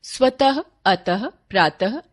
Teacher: विसर्ग का उच्चारण अघोष ह व्यंजन के समान होता है, जैसे स्वतः, अतः, प्रातः आदि।